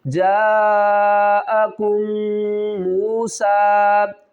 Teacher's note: میم ساکن کے بعد میم مشدد ہے، غنہ کریں گے